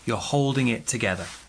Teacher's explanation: small stress on hold big stress on together